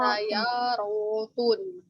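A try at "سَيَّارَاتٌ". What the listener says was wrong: Tanya dua-duanya panjang. Tanya panjang, ya-nya panjang, ro-nya.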